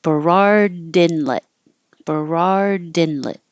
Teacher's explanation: you won't hear the D by itself Berard but you will hear it if you connect it with a word with a vowel after it